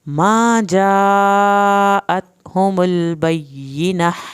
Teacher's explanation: जा मद्दे वाजिब को 3 अलिफ के बराबर लंबा करें